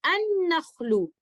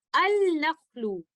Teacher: हम लाम अतारीफ को मुतहर्रिक नून के अंदर मर्ज करते हुए इस तरह से पढ़ेंगे अन-नख्लु। हम इसको इस तरह से नहीं पढ़ेंगे अल-नख्लु, क्योंकि यहाँ पर हमने लेटर लाम का इजहार नहीं करना, बल्कि यहाँ पर हमने इसका इदगाम करना है इस तरह से अन-नख्लु।